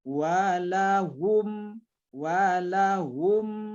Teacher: artinya menjelaskan melahirkan syafawi huruf bibir mana huruf bibirnya yaitu meme-meme sukunnya kita Jelaskan saja jadi benar-benar sampai terkatup bibir kita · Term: izhar syafawi, izhar safawi